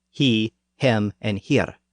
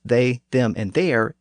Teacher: the southern versions began with an H sound whereas the northern versions began with a th sound